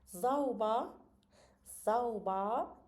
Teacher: Söz sonunda R hərfi A kimi deyilir.